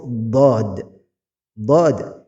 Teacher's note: makhrajnya ada di pinggir lidah bertemu dengan gigi-gigi yang ada di sebelahnya bisa dengan pinggir lidah kanan ya pinggir lidah sebelah kanan atau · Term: makhraj huruf dad